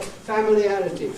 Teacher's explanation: they say familiarity, and make a clear vowel, fam of the first syllable